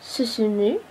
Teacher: en japonais, les lèvres ne sont jamais arrondies, mais relâchées. Le son produit est entre celui du mot ku et celui du mot mur.